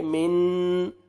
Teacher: نون ساکن کے بعد حروف اخفاء میں سے جیم ہے, یہاں پہ آپ نے نوز میں ساؤنڈ لے کے جائیں گے